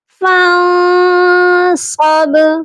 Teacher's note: نون ساکن پر اخفا ہوگا کیونکہ نون ساکن کے بعد صاد حروف اخفا میں سے ہے